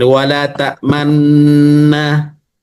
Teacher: makhrajnya adalah makhraj nun. Tapi yang bergerak bibirnya itu yang monyong sebentar. Monyongnya, Bibir monyong sebentar. · Menghimpun dua bibir untuk mengiringi huruf yang sukun sebagai isyarat dhammah dengan tanpa suara dan nafas. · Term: ismam